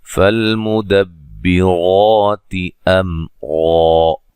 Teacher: لام کو ہلانا نہیں ہے، را کو موٹا ادا کرنا ہے، مد اصلی ہے، میم ساکن کا اظہار ہے، غنہ نہیں کریں گے، را کو موٹا ادا کریں گے۔